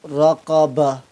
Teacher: قرآن پاک میں جہاں کہیں بھی آخری حرف گول تا ہو اور اس پر وقف کر رہے ہو تو وقف کی صورت میں گول تا کو ہا ساکن سے بدل دیں گے